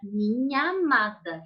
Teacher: Eu falo uma vez só esse A, então eu vou juntar